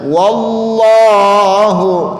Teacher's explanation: lafaz Allah sebelumnya ada huruf yang berharokat fathah, maka ini lafaz Allahnya dibaca tebal.